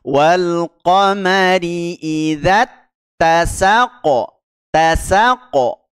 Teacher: huruf qofnya mantul ya Qalqalah